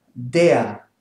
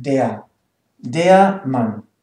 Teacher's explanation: It's only E-A. No R pronounced